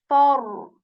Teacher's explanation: fa is articulated when we place the tip of our upper teeth onto the lower lips, and air comes out of our mouth when we say fa.